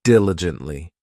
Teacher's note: This adverb has 4 syllables, and the stress is on that first syllable